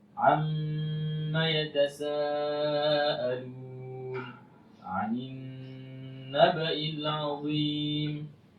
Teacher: ada nun dan mim yang bertasydid, maka harus kita baca dengan berdengung